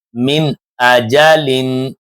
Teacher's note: دیکھیں نون ساکن کے بعد حمزہ آ رہا ہے، تو نون ساکن کی آواز کو ظاہر کر کے پڑھنے کی کوشش کریں گے۔